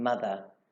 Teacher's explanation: the voiced Lenis TH in mother, where the blade of the tongue is placed behind the teeth and moves downward as the sound is produced.